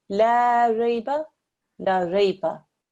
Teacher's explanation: Here I've stretched out the la